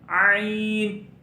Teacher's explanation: اس کے بعد عین کے اوپر کھڑی زبر ہے، تو عین کو ہم ایک الف جتنا لمبا کر کے پڑھیں گے، اور عین حروف حلقی میں سے حلق کے درمیانی حصے سے ادا ہوگا. عین اور ہا کا مخرج ایک ہی ہے، عین.